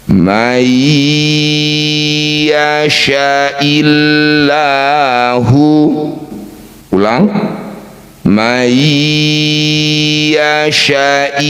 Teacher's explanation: Disebut bacaan idgham bighunah. Bunyi nun masukkan pada ya. Dengungkan dua harakat.